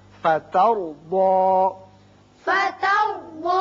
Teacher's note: تا باریک، را پر، ضاد بھی پر